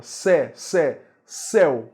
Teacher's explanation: E céu, a pronúncia é aberta. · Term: pronúncia aberta